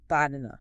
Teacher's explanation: The jaw relaxes, the tongue goes limp, and those A's collapse into the schwa. · In banana, only the middle syllable carries lexical stress. · Because it is stressed, that middle A receives the biological energy required to drop the jaw and produce the full, low-front, pure vowel A